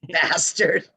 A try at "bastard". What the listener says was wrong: bastard, not bastard. That's American. No, bastard.